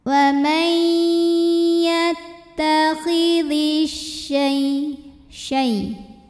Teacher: Maka cara bacanya alif lam tidak perlu kita baca, masukkan langsung ke shin. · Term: idgham syamsi